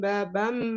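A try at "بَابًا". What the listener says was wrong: Nah, diulang, Afwan, baban ya, bukan babam. Jadi bak yang pertama dibacanya panjang. Nah, kemudian ban itu masuk dengan dengung ya, kurang ditahan.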